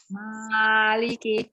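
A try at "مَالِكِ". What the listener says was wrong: Jangan terlalu panjang, ma-nya ma, jangan ma. Maliki.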